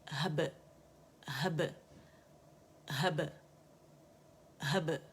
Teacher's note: बै कलकला जो बारीक है और बड़ी खूबसूरत बबल की सी आवाज़ आनी चाहिए, दोनों होंठ आपस में गिले से मिलेंगे, ठीक है। वहब मिल के जुदा हो जाएंगे, हब हब हब हब, ठीक है।